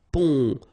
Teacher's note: when you get this O-M here, it will give you the sound on. So exactly the same sound as this O-N. All right, so in your nose